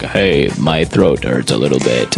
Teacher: usually if you have a sore throat or a very bad cough, you sound a little bit croaky